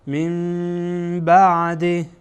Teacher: نعمت الله من بعد بعد از نون ساکن با آمده و با از حرف اقلاب هست، اقلاب میشه، یعنی نون ساکن به میم تبدیل میشه. میم نمیگن من اشتباهه.